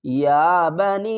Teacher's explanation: یا بنی اسرائیل اذکروا نعمتی التی، یا کو ایک الف کی مقدار کھینچ کر پڑھیں گے، اور یا ساکن سے پہلے زیر ہے، یا مدہ ہے، اس کے اوپر چھوٹی ماد بھی ہے، اس کو 3 الف کی مقدار کھینچ کر پڑھیں گے۔